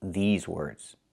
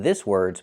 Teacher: We have to use the long e like green beans. I cannot use the short i like this is. I need the long e like green beans.